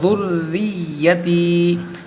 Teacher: यहाँ पर दो हर्फ मुशद्दद है, रा और या, दोनों को पढ़ेंगे दो बार